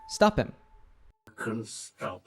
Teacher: The H sound in him is dropped and the P sound from stop links to him